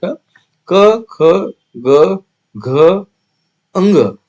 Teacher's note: कंठ यानी कि गले से निकलने वाला व्यंजन